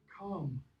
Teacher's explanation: The L drops off in the Middle English period. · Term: pre-consonantal AL